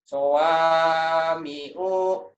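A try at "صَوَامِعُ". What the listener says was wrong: Sawami'u. Pendek atuh. Sawami'u.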